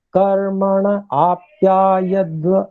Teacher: कर्मण आप्यायध्व, इसको जैसे वैसे तो होने को संधि के रूप में बोला जाता, लेकिन क्योंकि यहाँ पर स्पष्ट रूप से हमें ण में अ भी बोलना है, ण के साथ में अ मिलाकर, और आ अलग से बोलना है